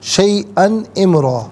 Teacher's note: شیئن میں غنہ نہیں کریں گے حمزہ پہ تنوین پہ